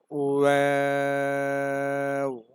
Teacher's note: ওয়াও উচ্চারণের সময় ঠোঁটটা গোল হবে, তারপর ছড়িয়ে যাবে, আবার গোল হয়ে যাবে।